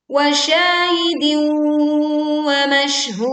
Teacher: Hud, panjangkan hu bisa 2, 4 atau 6 harokat dan ditutup dengan suara pantulan dal yang kuat